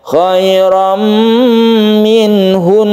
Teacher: hunya tetap pendek, langsungkan ke nun, tasydid nun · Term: gunnah musyaddada